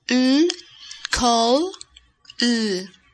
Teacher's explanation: El sonido de la terminación vibra en la garganta. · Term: voiced consonant